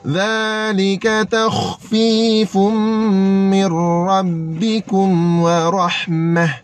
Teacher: Mim masuk terus pada ra. Nun tak payah duk sebut. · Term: idgham